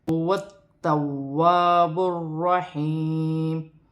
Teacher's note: الف سے پہلے زبر آ رہی ہے تو الف مدہ بن رہی ہے، اسے ایک الف کی مقدار کھینچ کر پڑھا جائے گا۔